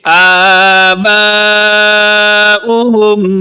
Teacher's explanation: آ کو بھی لمبا کریں گے اور با کو زیادہ لمبا کریں گے، کیونکہ یہاں پر مد ہے، اس علامت کو مد کہتے ہیں، اور یہ مد کی قسم ہے مد متصل، تو یہاں پر اس لفظ کو آپ لمبا کر کے پڑھیں گے، آباؤهم فهم غافلون۔